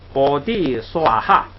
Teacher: 这个最后一个哈呀，应该读下来，应该读去声，就是四声。